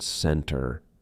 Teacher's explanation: It sounds like there is no T at all. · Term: silent T